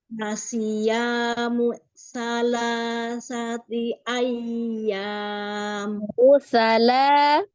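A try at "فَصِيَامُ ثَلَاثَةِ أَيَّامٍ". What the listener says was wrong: Ya, mu-nya itu jangan dikasih hamzah mu-nya. Jadi jangan dijedah. masih kejedah. Jangan kejedah mu-nya. Fasiyamu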